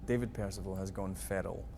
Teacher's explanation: It possesses wildly different vowel sounds to most accents in England, and the R is tapped, meaning that the tip of the tongue hits the alveolar ridge, the roof of the mouth, as you are articulating it.